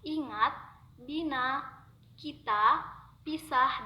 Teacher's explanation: Vokal I dilafalkan dengan cara menjulurkan lidah ke depan dan ke atas, disertai dengan menghembuskan udara keluar, sedangkan mulut dilebarkan dan tidak membundar. Ucapan vokal I akan pertama menjadi lebih nyaring karena posisi lidah berada lebih tinggi.